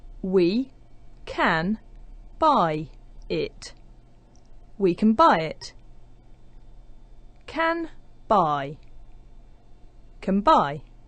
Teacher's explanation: word can is in phrases like we can buy where the the n Sound at the end of can is just before a b so it starts to resemble a m sound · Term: assimilated forms